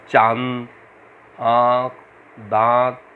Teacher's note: अनुनासिक, इसका उच्चारण नाक और मुंह से होता है